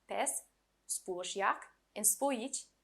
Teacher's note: are all stressed on the first syllable